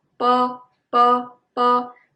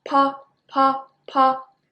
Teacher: So when you speak po, the air is stronger. When you pronounce bo, the air is just keep it in your mouth.